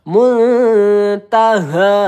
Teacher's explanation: Muntaha, nah di sini hanya panjang 2 harokat, haknya ini juga sama dan dua-duanya ini huruf ha letaknya di pangkal tenggorokan